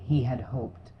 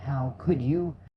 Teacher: the lightness of h in he had hoped versus the stronger push in how could you